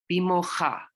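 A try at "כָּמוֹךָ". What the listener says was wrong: No, what is this one? Ka. It's a ka. No, it's kamocha.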